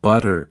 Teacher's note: The T between vowels often becomes a D sound.